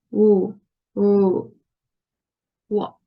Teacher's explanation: It is a voiced sound, and it is also approximant, and it's bilabial. That means that we need to use both of our lips to articulate this sound, and our lips won't be so close. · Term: woo sound